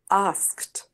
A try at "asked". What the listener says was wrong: That's it, good.